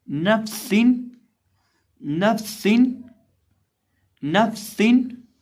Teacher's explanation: सीन के अंदर सीटी पैदा करके पढ़ेंगे।